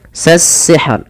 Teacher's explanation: Sasihr, alif lam di sini dia namakan dengan alif lam syamsiyah, yang namanya alif lam tertulis tapi tidak dibaca dan diidghamkan ke huruf sin.